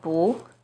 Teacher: it changes to the second tone